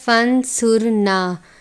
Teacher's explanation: مولانا فانصرنا، لفظ ہے فانصرنا، نون ساکن کے بعد صاد ہے، صاد حروف اخفا میں سے بھی ہے اور صاد حروف مستعلیہ میں سے بھی ہے، اس لیے صاد کو پر پڑھتے ہیں اور صاد پر اخفا بھی کریں گے. فانصرنا، را ساکن ہے اس لیے را کو پر پڑھیں گے.